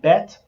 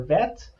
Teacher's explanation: the sound b and the sound v um are actually um interchangeable uh it is the same consonant they don't change the meaning